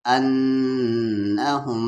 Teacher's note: غنہ یعنی آواز کو ناک میں تھوڑی دیر رکھنا ہے